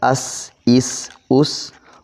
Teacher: सीन की आवाज जुबान नीचे ही रह जाती है